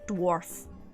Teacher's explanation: there's an R in there, but because there's a hard F at the end, we don't roll the R in there